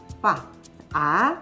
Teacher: 이것은 father, 아버지 할 때 fa의 아와 똑같습니다. 그런데 우리가 as라고 할 때 그 a의 그것보다는 조금 더 짧게